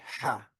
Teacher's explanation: the H consonant, ha, that begins hearing is called a guttural from the back of the throat